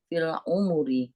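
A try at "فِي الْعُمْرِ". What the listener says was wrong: mimnya fil umri. Mimnya sukun. Fil umri.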